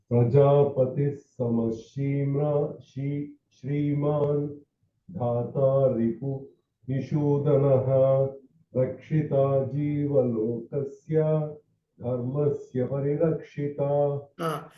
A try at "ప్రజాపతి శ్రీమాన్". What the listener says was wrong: అక్కడ మీరు ప్రజాపతి దగ్గర కొంచెం గ్యాప్ ఇవ్వడం వల్ల సాకి సావత్తులాగా వినపడుతుంది. గ్యాప్ లేకుండా కంటిన్యూ చేశారనుకోండి. ప్రజాపతి శ్రీమాన్.